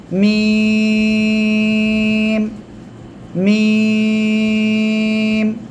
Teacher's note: 2 ঠোঁটের শুকনো অংশ বা বাইরের অংশ থেকে, এই যে মিম, মিম।